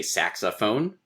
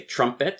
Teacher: We say saxophone, stress, unstress, stress. We say trumpet, stress, unstress.